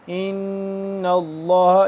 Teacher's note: یہاں پہ غنہ کریں گے اور لفظ اللہ پر کر کے پڑھیں گے